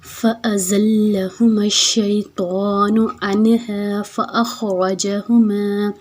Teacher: زا کو ہم نے سیٹی سے ادا کرنا ہے